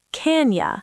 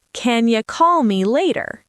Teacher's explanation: In connected speech, the u becomes a short y sound.